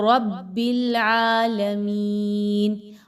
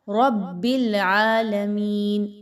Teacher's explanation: را پر زبر آ گئی، اس را کو پر پڑھیں گے، باریک نہیں پڑھنا۔